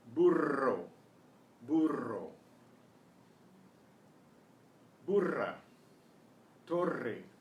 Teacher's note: the double R is trilled.